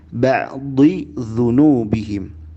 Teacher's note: Jangan ba'dhi dzu. Huruf zal jangan jadi dha, ya, tapi zal tipis.